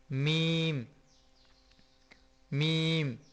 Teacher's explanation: میم بول کے دیکھیں تو ہمارے یہاں پہ ناک میں محسوس ہوتا ہے